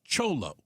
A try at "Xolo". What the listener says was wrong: Xolo like with an sh, not with a ch.